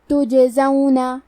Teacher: کلمت تجزون میں حرف تا پہ پیش ہے، تو ہمیں تا کو پیش سے پڑھنا ہے، جیم پہ جزم ہے، یہاں بھی جیم کا حکم ہے قلقلہ، تو ہم یہ حرف کو ہلاتے ہوئے یہ کلمہ کو پڑھیں گے